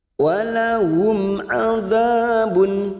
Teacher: Langsung masuk pada kata, karena sekarang kita wasal, maka kita melanjutkan pada kata walahum. Walahum mim sukun bertemu ain idhar safawi kita baca jelas tanpa mendengung.